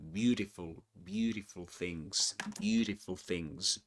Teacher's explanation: beautiful things, right? With the flap T there.